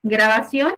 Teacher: es una palabra aguda porque su sílaba tónica es la última y lleva una N.